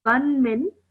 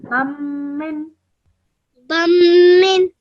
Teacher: when you join the ba to the meme, you hold that meme sound in your nose for 2 seconds as well.